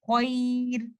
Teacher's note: را ساکن ہی ہے تو میں اس کو لائٹ پڑھوں گی کیونکہ اس سے پہلے یا ساکن کنڈیشن میں ہے غیر۔